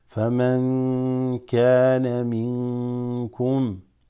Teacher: So فَمَنْ كَانَ, noon sakina followed by kaf, that's ikhfa